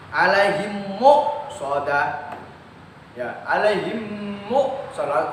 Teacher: Mim sukun bertemu huruf mim, berarti idgham mimi. Ya, cara membacanya memasukkan.